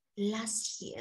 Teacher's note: the t sound in the last is also disappeared